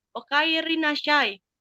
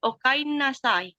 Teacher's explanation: Lalu selanjutnya kata ri yang terkadang menjadi n